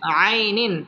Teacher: তানবিনের বামে হামজা আসছে। হামজা ইজহারের হরফ। এখানে গুন্নাহ ছাড়া স্পষ্ট করে পড়তে হবে। আইনিন হামজা খারা জবর আলিফ টেনে পড়তে হবে।